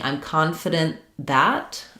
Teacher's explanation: We're going to hear the T if it just ends on the T. If I'm saying I'm confident that, I'm probably going to use an unreleased T